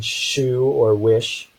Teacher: the sound for the voiceless postalveolar fricative